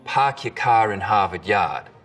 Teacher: We call this the start vowel. In Boston, it's usually pretty fronted.